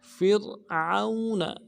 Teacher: فا کو را کے ساتھ ملانا ہے، را کو باریک کریں گے، عین کو واو کے ساتھ ملانا ہے، واو لین ہے، بغیر کھینچے پڑیں گے، اور نون کو نرم سے ادا کریں گے.